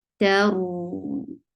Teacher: Whenever these are with sukoon, we'll get tawassut, and tawassut is a medium flow of sound. So the sound of ra will not stop abruptly, but it will have a medium flow of sound